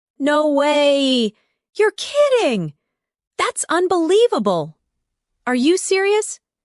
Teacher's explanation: Try saying them with emotion. Feel the rise in your voice when you express surprise.